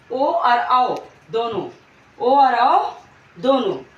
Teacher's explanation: ओ वर्ण जो है, ओ हमारा जो वर्ण है वो आ प्लस ऊ से मिलकर के बना है। हमारा ओ जो है वो एक संयुक्त स्वर है और ये दो स्वरों से मिलकर बना है, आ प्लस ऊ।